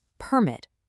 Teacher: If I punch up that first syllable, I get permit. That's a noun, right?